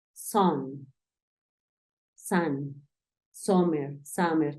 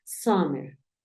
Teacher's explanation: Algunas personas tienden a pronunciarla más como una A, como una O, pero te vas a dar cuenta cuando realicemos nuestros ejercicios de listening que suena algo como summer, como si tu intención fuese decir una A, pero terminas diciendo una O